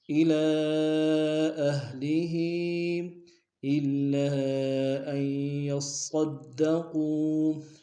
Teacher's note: مسلمة إلى أهله، الا میں لام پر کھڑا زبر ہے اور مد منفصل ہے، کم سے کم دو الف دار میں کھینچیں گے ، اہلی کے نیچے بھی کھڑی زیر ہے اور مد منفصل